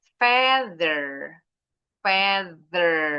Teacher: Bunyi th-nya ada getaran berarti voice.